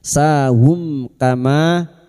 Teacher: Mim sukun bertemu kaf. Mim sukun dibaca jelas tanpa mendengung. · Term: Idhar syafawi